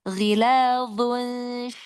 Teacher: Dha-nya mau terangkat lagi isti'lanya.